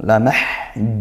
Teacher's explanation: ditepatkan makhrajnya di tengah tenggorokan seperti ain